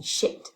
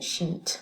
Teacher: Number 2 is the word sheet, and since in French you don't have a vowel length distinction, this is a key word, no vowel length distinction in French, well, not anymore, you can say that you expect a lack of distinction between a shorter I, as in shit, and the long one in sheet, with a tense vowel